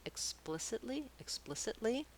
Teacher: sounds then when i add l y to make explicitly explicitly i just add one more syllable with a light l and a tense e sound this tense e has to be a different vowel than the